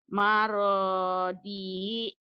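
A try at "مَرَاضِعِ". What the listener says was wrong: Maradi'i. ain. Karena kalau baca Quran nanti ujungnya nggak dibaca. Cuman ini jadi mati. Maradi', maradi', maradi'. Latihannya gitu ya, dibaca apa adanya.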